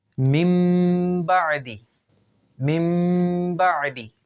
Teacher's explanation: نون ساکن کو میم سے بدل دیا گیا، لہٰذا یہاں پہ اقلاب کیا گیا، تو یہاں پر غنہ کر کے پڑھا جائے گا۔